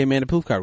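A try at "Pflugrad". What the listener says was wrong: Don't pronounce the P. Pretend the P's not there.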